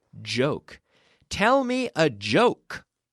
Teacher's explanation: J. It's like a CH. J. Then we activate the vocal cords.